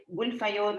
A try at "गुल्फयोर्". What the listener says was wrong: So that is gulpayor, that not fa, pa.